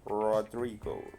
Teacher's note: En este caso la lengua tiene que retraerse para pronunciarse la R rótica. Rodrigo. Y esto ocurre en todas las posiciones.